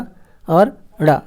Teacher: उच्छिप्त व्यंजन क्या है, उच्छिप्त का मतलब होता है फेंका हुआ। जिन वर्णों का उच्चारण करते समय जिह्वा झटके से नीचे की ओर गिरती है उसे हम उच्छिप्त व्यंजन कहते हैं